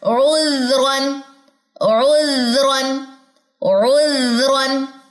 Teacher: زال باریک لیٹر ہے, اس کے کیس میں میری اقصا لسان نہیں اٹھی